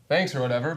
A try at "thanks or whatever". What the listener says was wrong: Yeah, don't rush that. Don't put those words together.